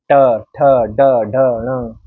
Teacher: हमारी जीवा यहां पर लगेगी मूर्धन्य पर